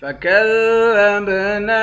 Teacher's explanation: ذال کو با کے ساتھ ملا کر با پر قلقلہ کریں گے، نون کے بعد الف ہے، الف حرف مدہ ہے، ایک الف کے مقدار کھینچیں گے۔